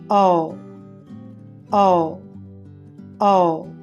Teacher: తర్వాత లాంగ్ వొవెల్స్లో నాలుగవది ఆ ఆ ఆ. దీనిని పలికేటప్పుడు పెదాలు గుండ్రంగా ఉండి నాలుక కొద్దిగా తెరచి ఉంటుంది. వోకల్ ట్రాక్ట్ యొక్క వెనుక భాగంలో వ్యక్తీకరించబడుతుంది.